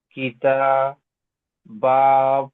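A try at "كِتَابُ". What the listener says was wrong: বু টান হবে না, এটিতে হারাকাত। কিতাবু।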